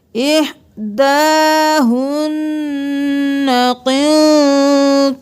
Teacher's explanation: नून पर तशदीद है, देर लगाई, नून साकिन है, इख्फा किया